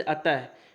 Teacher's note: विसर्ग का जो है उच्चारण कंठ से होता है